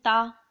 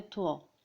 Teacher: تا کو بہت ہی سمپل طریقے سے پڑھنا ہے تا، ٹھیک ہے، اور تھوا کو تھوڑا موٹا کر کے یعنی کہ پر طریقے سے پڑھنا ہے